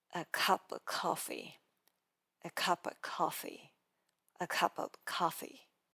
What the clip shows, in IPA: ə kʌpə ˈkɑfi